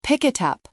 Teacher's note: The K from pick moves over to the I, and the T from it moves over to the U. It becomes one long word. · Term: linking